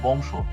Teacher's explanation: এখানে খেয়াল করো বংশ, এই বংশ শব্দে এখানে ছয়ের সাথে একটি অ আছে, অ এর আগে যেহেতু অনুস্বার আছে, এই জন্য এই অটা ও রূপে উচ্চারিত হবে।